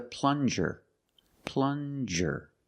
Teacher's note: Use the regular N and the J sound, like juice.